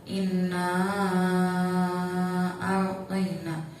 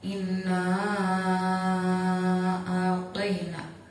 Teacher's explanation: apabila ada mad tabi'i bertemu dengan hamzah di lain kalimat, maka cara bacanya panjang. Panjangnya 3 alif atau 6 harokat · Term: mad jaiz munfasil